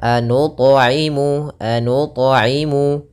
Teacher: ta-nya berharokat sukun, maka ini kita baca dengan bacaan qalqalah, ta-nya memantul, tapi jangan sampai qalqalahnya dengan qalqalah saktah, misalnya anut.